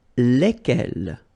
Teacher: So final S is not pronounced.